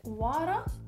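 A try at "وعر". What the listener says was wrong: Come on, pronounce the Ain then. Do you not say it at all? You don't say that? It's like, war. We just say that, war. Hey, that's war, you know?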